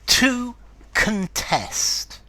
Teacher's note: notice the verb to contest, the stress is in the second syllable